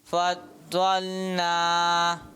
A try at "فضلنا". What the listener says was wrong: پیارے بچے کوشش کریں ضاد کو اور پر کریں.